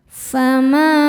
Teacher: Fama ma hukumnya adalah mad thobi'i zohiri. Sebab ada alif yang sebelumnya berharakat fathah. Cara bacanya dipanjangkan dua harakat.